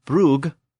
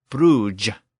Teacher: Words that had previously ended with a hard G sound now were starting to end with a softer J sound.